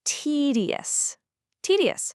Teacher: you might notice that the middle syllable almost softens into a D or even a super soft J sound depending on the speaker's regional accent · make sure you put the stress right on that very first syllable